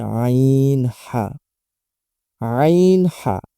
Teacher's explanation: দুই নাম্বার মাখরাজ হলকের মধ্যখান হইতে